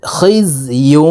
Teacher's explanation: গুন্না, তানউইনের পরে ইদগামে বা গুন্নার হরফ ওয়াও আসছে, এই কারণে এই ইয়াটি তাসদিদওয়ালা ওয়ার সাথে গুন্নার সহিত মিলাইয়া পড়তে হবে।